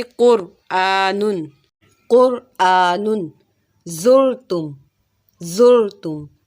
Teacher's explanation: را ساکن ہے، اس سے پہلے زبر ہو یا پیش ہو تب بھی ہم را کو ایسے ہی موٹا پڑھتے ہیں جیسے زبر اور پیش والی را کو موٹا پڑھا جاتا ہے، اور زیر والی را کو ہم باریک پڑھتے ہیں۔